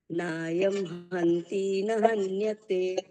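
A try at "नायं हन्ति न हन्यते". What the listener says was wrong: હંતી દીર્ઘ નથી. હંતી.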